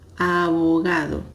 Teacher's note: Eu aproximei os meus lábios, mas eu não fiz um som forte.